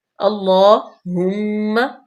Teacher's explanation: ہا مضموم ہے اور انتہائی حلق سے بھی ہے۔ اللہم، میم مشدد، غنہ پیدا کریں گے، تھوڑی دیر کے لیے رکیں گے۔